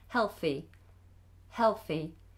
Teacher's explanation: I tend to pronounce the L by putting my tongue between my teeth